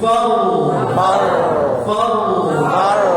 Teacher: jadi ada sifat takrir getaran roh